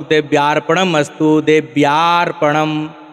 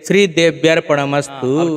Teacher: यानी आ का साउंड नहीं होगा अ का साउंड होगा